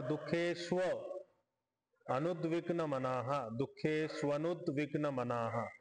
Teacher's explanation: तर इथं संधी झाले. दुखेशु आणि अनुद्विग्न, उकार आणि अकार मिळून व बनलाय.